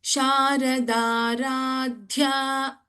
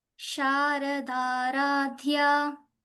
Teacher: In Aradhya, the last letter in that Sharada Radhya word, Dha, you should put stress. It's a Mahaprana.